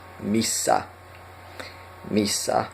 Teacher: And you know we have the double consonant there, so we hold it. This in Finnish there is a difference between single letter and double letter.